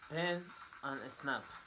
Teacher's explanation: Place of articulation, bilabial. Manner of articulation, stop or plosive.